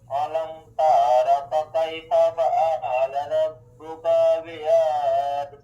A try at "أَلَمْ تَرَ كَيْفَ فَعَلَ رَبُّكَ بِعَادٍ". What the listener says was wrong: یہ ترا کو جلدی پڑھیں، تا کو کھینچے نا. الم تر، الم تر کیف فعل ربک بعاد.